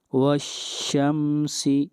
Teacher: واو کو ملا رہے ہیں شین کے ساتھ